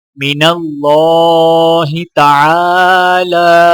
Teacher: عین کو الف کے ساتھ ملاتے ہوئے ایک الف کے برابر اور لام کے اوپر کھڑا زبر ہونے کی وجہ سے ایک الف کے برابر کھینچ کر پڑھیں گے